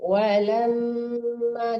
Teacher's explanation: Walamma didengungkan mim tasdidnya ya.